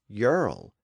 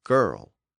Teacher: the hard G before the I would have probably shifted to a Y sound, as tended to happen in early Old English. So English would have the word today as yerl instead of girl.